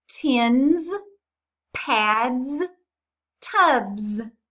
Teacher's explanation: the S at the end of those tins pads tubs they were a voiced S